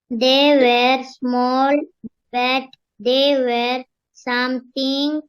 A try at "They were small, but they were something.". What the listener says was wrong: They were something. No, you should break. They were small, but they were something.